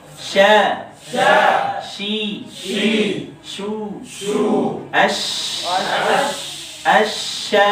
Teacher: Nah, mirip sama huruf jim, cuma bedanya kalau jim sampai ke langit-langit, ya tengah lidahnya. Kalau shin tidak.